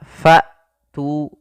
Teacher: ketika melafalkan hamzah fa tu, ya, nafas tertahan dan suara pun tertahan. Kemudian pelafal tu di sini ada mad tabi'i, yaitu ditandai dengan dhammah bertemu dengan huruf waw, panjangnya 2 harokat. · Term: hamzah yang sukun